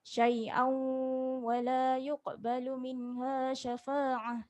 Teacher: Syai'au, kalau kita nak sambung, kena ada dengung 2 harakat.